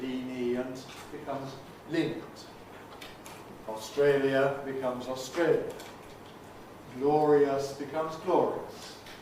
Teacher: What happens is that the I vowel, the happy vowel, before another vowel, before a weak vowel, can become a semivowel, a yod, so that lenient becomes lenient.